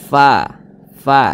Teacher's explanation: ketika kita mengucapkan huruf fa, maka ada nafas yang mengalir ketika kita mengucapkannya. Fa, jangan pa, jangan, tapi ada nafas yang mengalir. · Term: sifat hamas